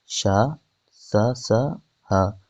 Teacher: जो तीनों सा होते हैं महाप्राण अघोष होते हैं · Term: ऊष्म एवं संघर्षी व्यंजन